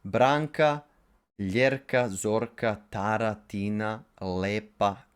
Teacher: two-syllable proper names that have a long descending accent